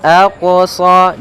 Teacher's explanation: ada bacaan qalqalah, yaitu huruf qafnya memantul